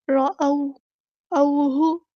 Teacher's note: ہاں کی پیش کو لمبا نہیں کریں گے، حرکات کو لمبا نہیں کرتے